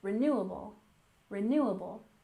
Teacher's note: renewable resources with a stress here on the second syllable